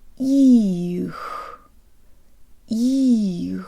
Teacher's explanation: On its way from the E vowel to the release of the ch, the tongue actually falls or moves to a lower position in the mouth. If it didn't, the word would sound like this. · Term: darker sound